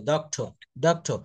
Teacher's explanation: ওয়ার্ডের শেষে আর এর উচ্চারণ থাকলে ব্রিটিশরা আর এর উচ্চারণ করে না